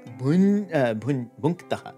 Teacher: the palatal nasal nya has now become the velar nasal nakara